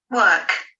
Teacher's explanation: In the received pronunciation, there is only open mid-central unrounded vowel. Work. And in Bristolian, we could hear open mid-back rounded vowel and also post-vocalic alveolar approximant.